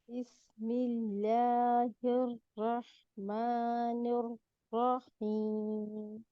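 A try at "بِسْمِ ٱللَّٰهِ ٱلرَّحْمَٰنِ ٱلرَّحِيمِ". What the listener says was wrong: इस र के मोटाई में ये जेर अदा ही नहीं हो रही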